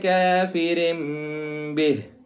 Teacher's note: را کے نیچے زیر ہے جس کی وجہ سے اس کو باریک پڑھیں گے، اور آگے با ہے تو یہاں پہ اخفا ہوگا.